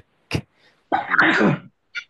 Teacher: প্রথমে শক্ত করে লাগাতে হবে পরে একটু বাতাস বের হবে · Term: কাফ